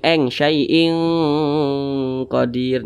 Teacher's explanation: didengungkan karena ada tanwin berjumpa dengan huruf q dia masuk kepada ikhfa Hakiki ab'ad jadi dengungnya itu lebih dominan jadi lebih condong berbunyi engaiin